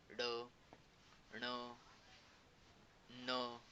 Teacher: तर ह्याचंच असं डेफिनेशन होईल, की ज्या वर्णाचा उच्चार करताना नाकातून ही ध्वनी निर्माण होते, त्यालाच आपण म्हणतो अनुनासिके व्यंजने